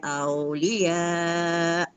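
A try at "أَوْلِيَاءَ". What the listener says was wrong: Kurang panjang dia tu awliya. Kemudian aulia tu mat apa tu? Mat wajib kan.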